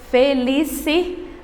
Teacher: Felicidade é a penúltima sílaba, que é a mais forte. Então, nesse caso, quando nós formos classificar essa palavra, ela é uma palavra paroxítona.